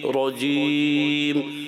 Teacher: آپ نے کھینچنا نہیں ہے را کی زبر کو. اعوذ باللہ من الشیطان الرجیم رجیم راجیم راجیم، یہ نہیں ہونا چاہیے.